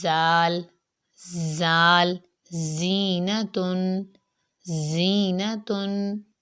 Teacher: اس کے بعد ہے زا۔ زا کی آواز جو ہوتی ہے وہ باریک ہوتی ہے، سخت ہوتی ہے اور اس سے سیٹی کی آواز آتی ہے